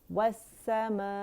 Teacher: حمزہ قطع کو ہم نے کیا کرنا ہے؟ اپنی جگہ سے ادا کرنا ہے جو اس کی جگہ ہے، یعنی فار تھروٹ اقص الحلق · السماء اگر اسے ہم پڑھیں السمائی، السمائی، تو مد لیٹر جو ہے یہ ایک کلمہ ہے السماء، تو اس مد لیٹر کے فوراً بعد ہمارے پاس حمزہ آ رہا ہے سیم کلمے میں، ٹھیک ہے. تو یہاں مد متصل واجب بنے گی، 4 to 5 کاؤنٹس کھینچنے سے لازمی ہے · ای جو ہے اقص الحلق سے ادا ہوگا کیونکہ یہ حمزہ قطع ہے